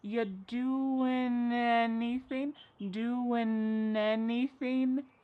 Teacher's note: We link together doing because we're going to drop the g. It ends with the sound n the n sound. · And then the next word, anything. We sometimes drop the a and we're going to push those two together because there's two n sounds side by side. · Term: linkings